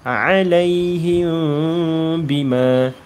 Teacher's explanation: apabila mim mati bertemu dengan ba hukumnya adalah ikhfa syafawi. Dan bacaan kita kena samar-samar dengung.